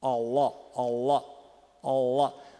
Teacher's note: É a raiz da língua que se retrai e aí muda a caixa de ressonância. E fica esse som faringalizado.